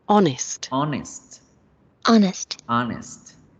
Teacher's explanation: La palabra se escribe con H, pero en la pronunciación la H no suena.